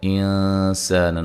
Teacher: نون ساکن کا یہاں اخفا ہے اور الف مدہ ہے، لام کو باریک پڑھیں گے